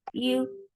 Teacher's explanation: for dhamma, circle your lips. The sound is very short.